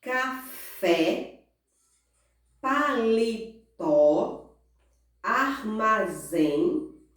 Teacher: Todas essas 3 palavras, elas têm a última sílaba mais forte. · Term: oxítona